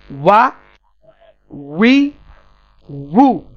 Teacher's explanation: দুই ঠোঁট পুরোপুরি মিলবে না